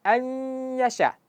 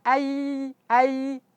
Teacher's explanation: Jadi idgham bighunah. Jadi pastikan ketika kita baca nun mati berjumpa dengan ya masukkan suara ke hidung ke khaisyum. Kemudian dipanjangkan.